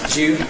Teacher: Notice this coalescence [dju], not [du ju] (‘do you’), but [dju].